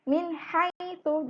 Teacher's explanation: ketika nun mati bertemu ha, bacanya harus jelas juga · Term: izhar